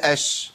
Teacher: قلنا الشين رخوه بيجري فيها الصوت